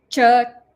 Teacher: it comes from a place called talu which is next to the kantha region